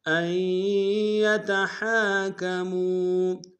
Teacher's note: میم کو واو کے سامنے لائیں گے، واو مدہ ہے، واو مدہ کے اوپر مد منفصل ہے، کم سے کم دو الف انداز میں کھینچیں گے